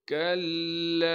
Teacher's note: کلا، کاف کو باریک کر کے پڑھیں گے اور کاف کو ہم نے لام سے ملانا ہے جس پر تشدید ہے. تشدید ہونے کی وجہ سے تھوڑا سا ٹھہراؤ رکھیں گے. پھر لام کے بعد الف مدہ ہونے کی وجہ سے لام کو ایک الف کے مقدار کھینچیں گے.